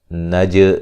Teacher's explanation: عنین نون مشدد پہ غنہ ہے۔ نج جیم پہ قلقلہ کریں گے